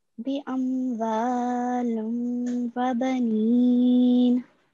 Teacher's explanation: make sure to do a 2 second nasal sound here when we merge the tanween into the vowel mushaddad. We have to do a 2 second nasal sound.